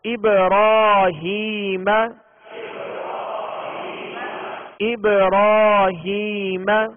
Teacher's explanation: حروف قلقلہ 5 ہیں اور قلقلہ کا معنی ہے جنبش، لوٹتی ہوئی آواز کو قلقلہ کہتے ہیں، اور یہاں با ساکن ہے لہذا اس کو ابراہیم نہیں بلکہ ابراہیم یہ قلقلہ کر کے پڑھیں گے، اور را پر کھڑا زبر ہے تو را کو پر پڑھیں گے یعنی موٹا پڑھیں گے